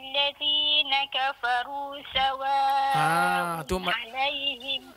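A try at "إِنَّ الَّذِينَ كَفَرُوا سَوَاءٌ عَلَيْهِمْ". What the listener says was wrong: Dia masih tebal sikit lagi. Kalau kita lama-lama ajak mulut kita tu, lama-lama dia akan jadi ringan dan juga sebutan dia akan jadi elok lah insya-Allah.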